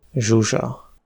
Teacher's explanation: ZS (à ne pas confondre avec SZ) se prononce [ʒ] comme dans le prénom Zsuzsa.